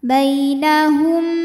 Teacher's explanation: karena mim sukun menghadapi huruf ba maka bunyi mim sukun dengung didengungkan ya tahan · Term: Ikhfa Syafawi